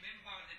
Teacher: نون ساکن ہے، بعد میں با آ رہی ہے، تو اب نون کو میم کے ساتھ تبدیل کر کے من بعد پڑھنا ہے